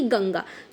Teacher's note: अनुस्वार का उच्चारण नासिका से होता है अर्थात नाक से होता है